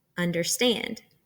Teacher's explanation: third type of foot is anapestic this is where we have two unstressed syllables followed by a stressed syllable